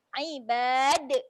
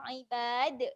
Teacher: jadi huruf dal dekat hujung ni dia ada lantunan. Okey, lantunan dekat sini lantunan yang besar sedikit lah.